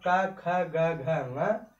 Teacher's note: ये सब क्या है, कंठ से बोले जाते हैं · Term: क वर्ग